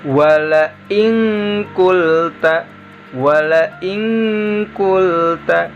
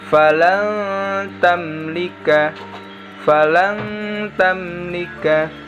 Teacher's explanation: nun sukunnya dirubah menjadi lafal eng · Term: ikhfa